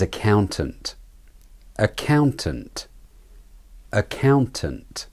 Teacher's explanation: Not ak and tant. The ow is the clear vowel, and so it's the stressed syllable.